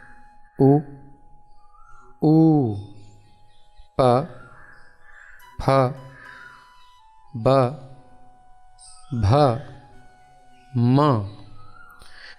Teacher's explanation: जिन वर्णों का उच्चारण स्थान ओष्ठ यानी होठ हैं उन्हें ओष्ठ्य वर्ण कहते हैं। प, फ, इसमें होठों का उपयोग हो रहा है।